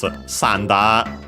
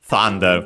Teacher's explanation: Japanese doesn't have the th sound, and so they replace it with the closest one, which is s.